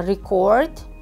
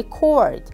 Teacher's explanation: record noun with stress on the first syllable and becomes record verb with stress on the second syllable